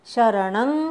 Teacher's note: न वरच्या अनुस्वाराचा ङ म्हणायचा. अंग म्हणतो तसा.